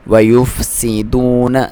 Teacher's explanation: سین کو باریک سیٹی کے ساتھ